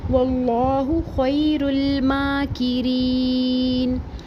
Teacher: ماکرین، کاف کے نیچے زیر اور اس کے بعد یا مدہ کو بھی ایک الف برابر پڑھیں گے اور آیت ختم ہونے کی صورت میں وقف عارض سکون کریں گے، نون کو ساکن کر دیں گے · خیر الماکرین، خیر، یائلین کو نرمی سے پڑھیں گے اور رو کے پیش کو لام ساکن سے ملا کے پڑھیں گے اور لام ساکن ہلے گا نہیں۔ میم کے اوپر کھڑا زبر ہے، کھڑا زبر ایک الف برابر پڑھیں گے، کھڑا زبر الف مدہ کے قائم مقام ہے، ایک الف برابر پڑھیں گے۔